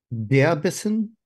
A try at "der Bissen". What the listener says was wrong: Der Bissen, sehr gut.